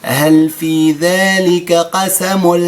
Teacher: كتمشي النون ديال التنوين وكتمشي الغنة ديالو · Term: إدغام تام